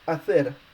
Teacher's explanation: hacer is a word that's ending with a consonant, so it's stressed on the last syllable